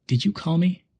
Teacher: if we stress you we're asking if the person was the one who called